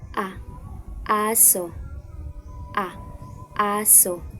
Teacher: Ito ay binibigkas bilang isang bukas at sentral na patining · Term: ponemang A